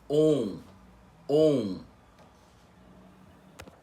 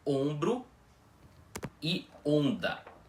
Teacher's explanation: On é aquele som nasal da letra O, aquele que é pronunciado com o ar saindo do nariz e da boca ao mesmo tempo